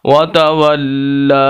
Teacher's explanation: جس حرف کے اوپر نیچے آ جائے اس حرف کو لمبا کرنا ہوتا ہے، تو لام کو ہم لمبا کریں گے، اور چھوٹی مد بھی ہے اس پر۔ آگے اس کی یا ہے، خالی ہے، تو جو خالی حروف ہوتے ہیں ان کو ہم نہیں پڑھتے، چاہے وہ الف ہو یا کوئی اور حرف ہو۔ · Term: کھڑی زبر